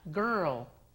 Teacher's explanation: tenemos que enrollar la lengua para la R y después desenrollar la lengua y con la punta de la lengua tocar los dientes para hacer la L